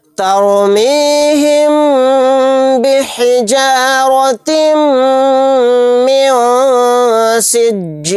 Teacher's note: ता को मीम में मिलाते हुए गुन्ने के साथ पढ़ेंगे क्योंकि मीम के ऊपर तशदीद है। · नून की आवाज़ को नाक में छिपा कर पढ़ना है। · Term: इख्फा